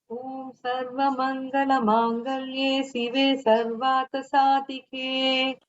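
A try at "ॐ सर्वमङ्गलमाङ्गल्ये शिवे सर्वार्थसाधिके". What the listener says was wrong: Not to say sive, shive. Sh should come. Sarvartha tha mahaprana. Dha also mahaprana.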